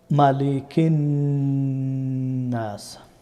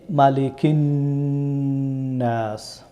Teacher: সুতরাং আপনারা যেখানে নুন মুশাদ্দদ এবং মিম মুশাদ্দদ পাবেন আপনারা সেখানে অবশ্যই গুণনা করবেন। নাকের বাসি দিয়ে আওয়াজটাকে দুই হরকত পর্যন্ত লম্বা করবেন। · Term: গুন্না